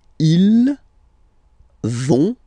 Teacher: So ils vont, final T not pronounced.